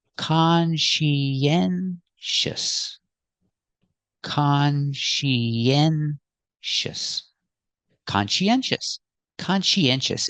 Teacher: Put the stress on the first syllable and third syllable. We have 4 syllables.